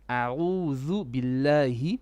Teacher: Ayn from the middle throat.